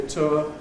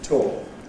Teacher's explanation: What used to be ‘tour’ [ tʊə ] is increasingly [ tɔː ]. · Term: Loss of / ʊə /